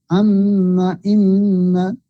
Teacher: মিমটা দুই ঠোঁট যুক্ত করে নাক দিয়ে বের হয়